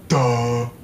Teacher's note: Voiced alveolar stop and breathy voiced, low back, unrounded vowel, sometimes with advanced tongue root.